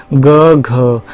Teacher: ये क्या है? गूंजने वाले व्यंजन है, अथवा सघोष भी बोलते हैं, मतलब गले में कंपन होता है